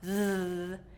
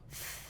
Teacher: voiced is with our voice on, thh, and voiceless is with the voice off, th. So voice sounds, you'll feel a vibration, voiceless, you will not, in your throat.